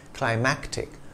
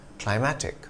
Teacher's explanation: the latter has a hard c sound before the t